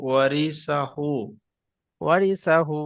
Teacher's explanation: হুটা একটু টানতে হবে, ওটা যেহেতু আলিফ মানে ওয়াও মাদ্দার সমতুল্য, উল্টা পেশ আছে।